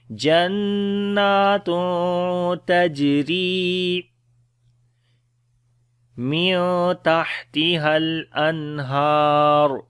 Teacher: After the tanween, the next is ta, we make ikhfa sound here, we hide the sound of noon. On the jim we make qalqala, which is the weak qalqala. · On the jim we make qalqala, which is the weak qalqala. Ra we read in light sound. Ya is madda here, we long here.